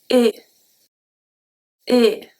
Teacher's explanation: So the tongue is going to stay at the bottom of your mouth. The A goes through your mouth, not through the nose. And the lips are slightly stretched horizontally.